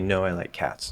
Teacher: this is a basic statement i'm falling at the end